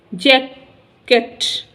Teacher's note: the first syllable in जैकेट is stressed